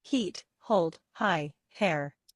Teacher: open your mouth quickly. put out a lot of air. Do not use your voice and do not touch a roof of your mouth with your thumb. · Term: voiceless concerning sound